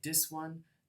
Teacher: in Jamaican English they would say dis one this is alveolar